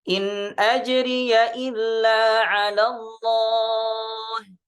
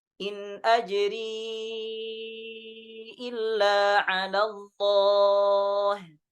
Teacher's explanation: Sedangkan di riwayat Syu'bah dibaca bi iskanil ya'i ma'al madd. Jadi ajri. Nah, ini sudah sering di ayat sebelumnya juga di surah Yunus ada juga, ya.